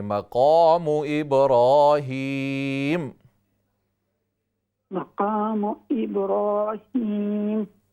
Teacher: قاف کے ساتھ الف کو بھی موٹا کریں